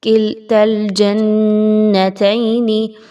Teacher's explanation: اگر آپ تا کو لام کے ساتھ ملا رہے ہیں تو پھر یہ الف نہیں پڑھا جائے گا